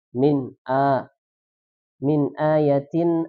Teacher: dibaca izhar jelas jangan didengungkan